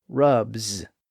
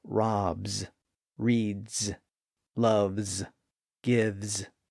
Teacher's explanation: past tense suffix ends with a voiced D sound rubbed and in present tense the suffix ends in a voiced z sound